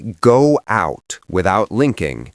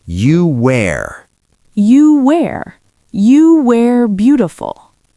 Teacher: If the next word is R, you cannot go from U to R without passing through a W shape. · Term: W sound